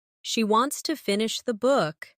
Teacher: Stress wants and book, and let to finish the be soft and fast.